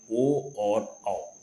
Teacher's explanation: 2 स्वर कंठ तथा कुछ होठों के स्पर्श से बोले जाते हैं, होती हैं ओ और औ। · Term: कंठोष्ठ